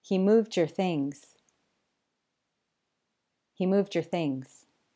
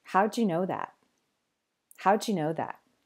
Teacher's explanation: To review, sometimes a final D sound in a word and an initial Y sound in the following word fuse to a J sound due to a feature of connected speech called coalescence